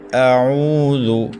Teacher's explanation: حمزہ کو حلق کے آخر سے، عین کو حلق کے درمیان سے ادا کرنا ہے۔ عین کے بعد واو مدہ ہے، ایک الف تک کھینچیں گے۔